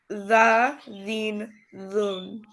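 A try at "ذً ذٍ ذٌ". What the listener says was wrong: Zan, Zin, Zun, not the. Zan.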